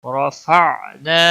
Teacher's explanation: را پور پڑی جائے گی اور الف مدہ ہے، ایک الف کے برابر اس کو کھینچنا ہوگا